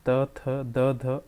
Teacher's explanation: जिन वर्णों का उच्चारण स्थान दांत से होता है उन्हें दंत्य वर्ण कहते हैं